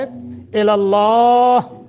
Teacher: لفظ اللہ کو منہ بھر کر پڑھیں گے